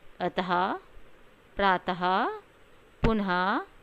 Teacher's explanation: जब हम इनका उच्चारण करते हैं तो इसे बोलने में हा की ध्वनि आती है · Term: विसर्ग